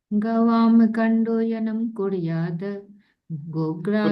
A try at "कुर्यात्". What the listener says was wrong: कुरियाद, कुरियाद द के बाद हलंत है, इसको द नहीं पढ़ना है।